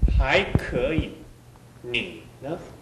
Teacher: 반드시 삼성은 성대가 끓는 소리가 나줘야 됩니다.